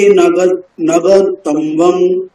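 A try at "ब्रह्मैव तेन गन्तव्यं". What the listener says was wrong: ন গন্তব্যম তম্ব্যম নয় তব্যম তকার বকার ইয়কার তারপর অনুস্বার ন গন্তব্যম তম্ব্যম হয়ে যাচ্ছে তম্ব্যম না গ তারপরে দন্তের না ইয়ম গন্তব্যম গন্তব্যম বলুন গন্তব্যম কেন হচ্ছে গণ বলুন তব বলুন ইয়ম বলুন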